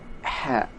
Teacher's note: Suara ha dikeluarkan di tenggorokan seperti ketika kita mengambil nafas.